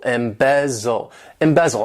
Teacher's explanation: this verb has three syllables and the stress is on that second syllable